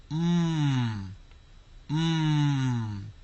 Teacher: they're nasal sounds because when you make the M sound and the N sound, we are actually making the sound come out through our nose.